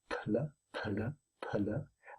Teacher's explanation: a straight pl, finishing the P before starting the L, one can add in the rest of the word with, of course, a stress pulse on the second syllable.